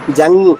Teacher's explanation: జా తర్వాత అనుస్వరం, పెదవులు కలవు.